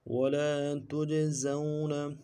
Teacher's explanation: زا کو واو کے ساتھ ملانا ہے، واو لین ہے، بغیر کھینچے پڑھیں گے، نون کو نرم سے ادا کریں گے۔